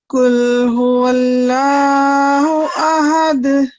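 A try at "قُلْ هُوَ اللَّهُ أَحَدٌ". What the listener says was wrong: قل هو اللہ احد. بہت زیادہ لمبا نہیں کریں گے، 2 سیکنڈ کا ٹائم دینا. احد.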